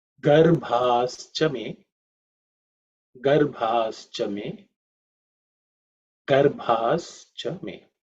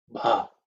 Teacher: Bha is the fourth letter in the Pavarga. So it has to be aspirated with means a lot of air.